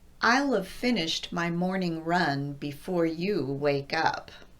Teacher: If I want to say I will have, I'm first going to contract I will to I'll, and then I'm going to add have to the end by just saying of. So I will have in its contracted form would sound like I'll of. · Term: double contraction